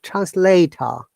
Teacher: we do not pronounce r in this case that's i'm saying in british english we do not pronounce r at the end in this case